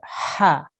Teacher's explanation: Comes from the throat, middle of the throat. Ha. Okay, good.